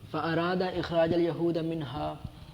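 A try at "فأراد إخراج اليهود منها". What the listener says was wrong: فاراد اخراج الیہود پڑھنا ہے آپ نے، یہودا نہیں پڑھنا. اخراج الیہود پہلے بھی آپ نے.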